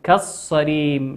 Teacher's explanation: لام ساكنة أتى بعدها حرف الصاد والصاد من حروف اللام الشمسية ندغمها